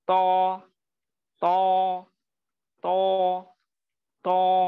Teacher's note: منہ بھر کے پڑھیں گے، اطباق کا لیٹر ہے، یعنی تفخیم کے لیولز میں سب سے موٹا پڑھا جانے والا حرف ہے یہ